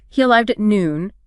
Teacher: Like, he arrived at noon, your voice falls on noon. That clearly tells the listener, okay, statement complete, information delivered. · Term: falling intonation